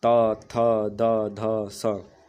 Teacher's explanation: जिन व्यंजनों का उच्चारण में जिह्वा की नोक, मतलब जिन व्यंजनों आगे वाला भाग हमारे दांत को स्पर्श करता है, उन्हें दंत व्यंजन कहते हैं।